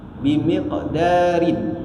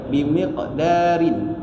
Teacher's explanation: kerana bunyi pantulan qalqalah dibaca bersambung dengan huruf berikutnya, maka ia dibaca tidak terlalu kuat. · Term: qalqalah sughra